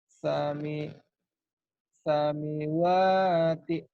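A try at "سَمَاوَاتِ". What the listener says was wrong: Bukan sami kan barisnya di atas. Kan ada yang berdiri ini kayak alif. Samawati.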